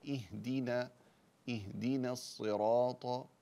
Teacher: كسر كامل ثم نرقق النون